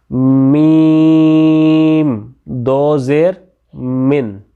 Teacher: ठीक है, इसके भी आर्टिकुलेटर जो हैं उनका आपने ख़ास क्या रखना है, ड्राई पार्ट ऑफ लिप्स जो है वो आपने मिला लेना है एक दूसरे के साथ, दोनों लिप्स का जो खुश्क हिस्सा है।